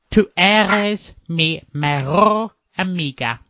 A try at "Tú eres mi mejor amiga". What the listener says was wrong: I'm going to correct you on the eres because it's not a double R. Tú eres.